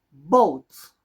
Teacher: va a sonar un poco más entre una a y una o